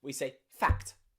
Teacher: that C and T is almost like one sound because we say them so quickly